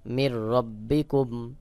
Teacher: নুন সাকিনের পরে র, এটা ইদগামে বে গুন্নার হরফ, এখানে গুন্না ছাড়া মিলাই পড়তে হবে। মিম রজের মির, র বাজবর রব, বাজের বি, কাফ মিম পেশ